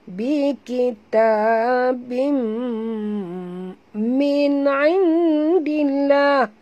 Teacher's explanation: Bikitabim ta maktabi'i du harakat ada alif kecil ni. Bim tanwin bertemu dengan mim idgham ma'al gunnah tutup mulut.